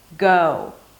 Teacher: with an open O and then close it to an U, as if there is a W there